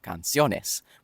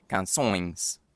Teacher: without any consonant, but just a long nasal diphthong